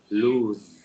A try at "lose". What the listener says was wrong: Okay, perfect.